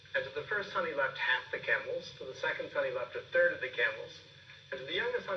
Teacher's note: He starts that sentence high here, and then he's listing. And so when he's listing the number of camels, we see that he's rising on each one because he's not done. And then we see a rise and fall as he ends the sentence.